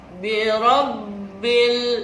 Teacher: jelas terdengar suaranya Bil dimulut Ya itu namanya Alif Lam Qomariah